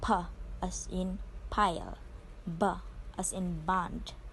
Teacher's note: bilabial sounds are produced when both lips come together